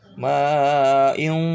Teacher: harus disamarkan, artinya suaranya seperti bunyi n dan eng, antara n dan eng ya.